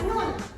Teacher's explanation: Huruf nun makhraj hurufnya di ujung lidah di sisi atas.